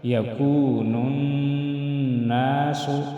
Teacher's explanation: میں وائی مدہ ایک الف کے برابر کھینچ کر پڑھیں گے نون ناس نون مشدد میں غنہ کریں گے